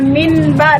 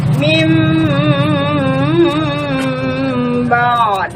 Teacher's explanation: Jadi kita tidak baca, contohnya seperti min ba, jadi kita tidak baca min ba, tapi dipalingkan, diganti bunyinya, suara nun matinya diganti menjadi mim. Jadi kita baca mim ba'd. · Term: iklabe